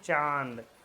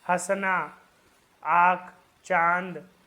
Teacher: चांद में जो है ना नाक भी हमारा थोड़ा सहयोग करता है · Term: अनुनासिक